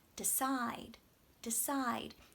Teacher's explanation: We want to have a clear vowel on our stressed part. But on the unstressed part, the DE, we don't have to say decide. We can say duh. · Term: schwa